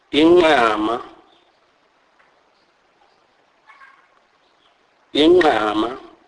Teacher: This is a nasalized form of the Q click sound